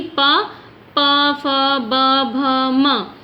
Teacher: फिर वैसे ही प, फ, ब, भ, म। तो यानी कि जब भी हम प वर्ग का उच्चारण करते हैं तो ये हमारे होठ या ओष्ठ से छूती है